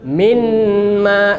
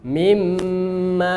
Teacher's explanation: Nun sukun bertemu mim idgham. Berarti lidah kita langsung di makhraj mim.